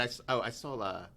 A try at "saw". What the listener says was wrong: You say that word again. Saw. Okay, but it sounded like an L. I saw.